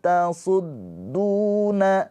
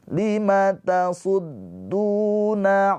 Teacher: du panjang dua harakat pemanjangnya wau sukun mad thobii